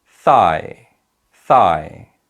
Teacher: In this word thigh, there are two vowel sounds, but we emphasize the first vowel sound and the second one is a weak sound